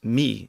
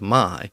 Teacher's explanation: you still see that old pronunciation in certain uh English dialects lots of British speakers British English speakers still pronounce m y as me instead of my